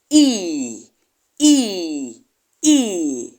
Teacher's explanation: there is no Glide there is no movement from one vowel quality to another vowel quality as a results you produce the sound in just a single